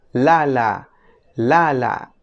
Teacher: en fonética se le conoce como lateral alveolar Sonora